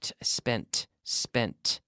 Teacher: notice how in the past we have the T sound it's very strong